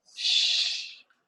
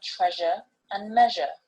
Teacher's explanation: These two are the palato-alveolar fricatives and occur when the tip of the tongue is behind the alveolar ridge